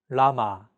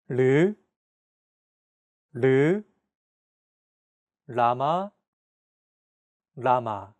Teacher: This sound is actually somewhere between an L and an R sound. When pronouncing this sound, your tongue should strike the gum ridge behind your upper teeth in a quick, rapid motion. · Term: consonant 리을